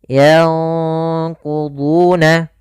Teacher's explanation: Sedangkan ikhfa itu nunnya disamarkan kepada huruf qaf. Dan qaf termasuk huruf yang tebal, maka ikhfanya juga ikhfa yang kita tebalkan. Yanquduna. Kemudian kita tahan gunnahnya.